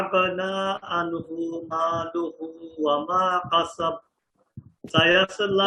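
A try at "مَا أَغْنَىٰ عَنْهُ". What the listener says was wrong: মা আগনা আনহু, আনহু না কিন্তু আইন আইন। মা আগনা। আপনার ওই যে গাইনের উচ্চারণটা শক্ত।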